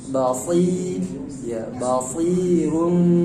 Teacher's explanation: Meskipun dia kasrah tetap harus jelas shadnya dia basir karena huruf yang harus meninggi pangkal lidah.